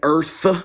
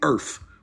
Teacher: instead of saying Earth with a th I say Earth with a F